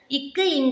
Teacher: நாவினுடைய முதற்பகுதி அன்னத்தின் அடிப்பகுதியை வந்து பொருந்துவதனால் பிறக்கும்